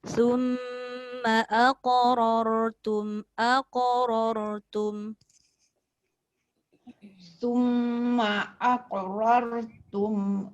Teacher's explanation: qaf qalqalah tak boleh putus sebab dia berada di tengah.